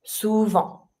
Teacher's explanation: I don't pronounce my T.